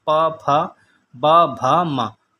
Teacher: जो होठों से बोले जाते हैं बंद करके उनका प्रयोग किया जाता है, वो वो ओष्ठ व्यंजन है।